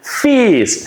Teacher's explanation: We are pronouncing unvoiced F sound with a long E.